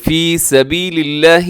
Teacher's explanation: لفظ اللہ کو باریک رکھیے گا، اس سے پہلے زیر ہے